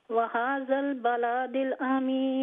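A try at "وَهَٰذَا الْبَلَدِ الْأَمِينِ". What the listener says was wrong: ये बलादिल लाम लंबा नहीं है, वहाज़ल नहीं वहाज़ल बलदिल अमीन, आप कह रही है बलादिल, लाम लंबा नहीं है, बलदिल अमीन हाँ।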